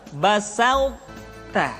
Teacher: Sifat to, sifat itbaq yang dimiliki oleh huruf to masih tetap ada. Sehingga ketika mengucapkan to bertemu dengan ta, terdengar suara yang menebal.